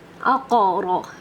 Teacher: اقرا، یہ دیکھیں تینوں حروف، ویسے تو یہ را لائٹ ہے، لیکن اس کے اوپر علامت آنے کی وجہ سے، فتحہ زبر آنے کی وجہ سے را بھاری پڑھا گیا ہے